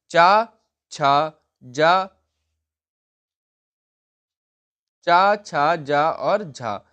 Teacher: च वर्ग हमारा तालव्य के अंतर्गत आता है। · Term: तालव्य व्यंजन